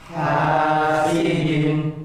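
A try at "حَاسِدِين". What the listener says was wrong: Nah, Bapak mengira-kira ha itu ya. Ha panjang ya.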